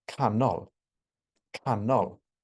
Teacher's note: generally make that part of the word longer louder and higher in Welsh what you generally do is you make the stress syllable shorter you make it quieter and you make it lower in Pitch so you have something that sounds like canol canol down and